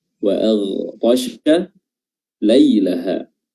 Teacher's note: Huruf ghain makhrajnya adalah adana al-halq